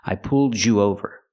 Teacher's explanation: sometimes Americans make it a j sound when you have a d and a y